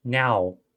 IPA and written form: næw (now)